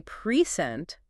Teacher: If I say present with the stress on the first syllable, it's a noun, a gift. But if I say present with the stress on the second syllable, it's a verb, to give something.